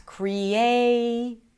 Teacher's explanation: in the word creation, the A is the primary stress, creation. The primary stress is the longest syllable of them all.